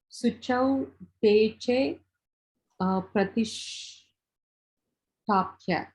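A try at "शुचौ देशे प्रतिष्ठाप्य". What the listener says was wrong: Nice.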